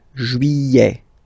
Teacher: Don't pronounce this final T, E-T here at the end.